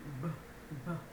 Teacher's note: b, no teeth. And we add vibration, b, b. So you should be able to feel the movement of your throat when you make that sound.